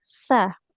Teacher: Bukan huruf syin ya. Tapi iya sa ujung lidahnya menempel ke ujung gigi seri atas